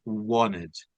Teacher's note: whenever you have T after N so the T will be silent. T will not be pronounced.